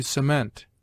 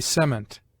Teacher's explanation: the verb has commonly the accent on the latter and the noun on the former syllable